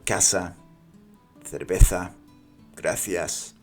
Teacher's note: the S sounds like an S and the zed and the C sound like a th sound in English. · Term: distinction, Distinción